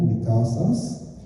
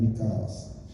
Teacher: So one of the large ones is intervocalic S loss. So there is a loss of the sigma sound when it's surrounded by two vowels. So for example, mikasas becomes mikahas and then mikas.